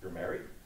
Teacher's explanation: Declarative syntax is rising intonation